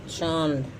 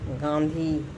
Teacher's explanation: नाक से कम, मुंह से ज़्यादा हवा निकलती है, ठीक है, उसे अनुनासिक कहते हैं।